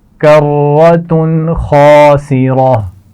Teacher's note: تنوین کے بعد حرف خا آ گیا ہے، تو یہاں غنہ نہیں کیا جائے گا